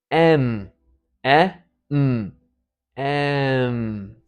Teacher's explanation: Try and keep the gap between your teeth when your lips come together. And you'll feel your lips vibrating nicely. And the air's going through your nose.